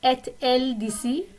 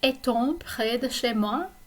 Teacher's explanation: so we just pronounce the T when we invert that form of être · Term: liaison